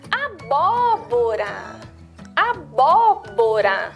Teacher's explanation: Que é a vogal O que vai ficar com o sonzinho um pouquinho mais aberto.